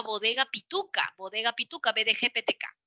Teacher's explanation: el aire que sale de los pulmones encuentra un cierre total para la B la d la la g la p la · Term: oclusivo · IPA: /b, d, g, p, t, k/